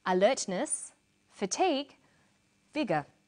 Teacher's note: we put commas where she uses pauses, and we use intonation to separate the items in a list. We write alertness, comma, fatigue, comma, vigour.